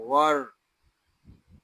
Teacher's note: غین را زبر غر، اس کو غر اس طرح نہیں پڑھیں گے، اس کو پڑھیں گے غر۔ غین حروف مستعلیہ میں سے ہے، اس کو پر یعنی موٹا پڑھیں گے